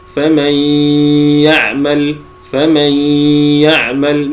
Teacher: وقولنا بغنه اي انه يخرج اثناء الادغام غنه من الخيشوم وهو الصوت الذي يخرج من الخيشوم مرافقا لحرفي النون والميم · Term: ادغام بغنه